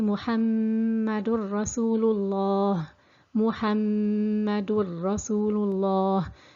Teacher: the meme in the middle has to be held for 2 counts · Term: ghunna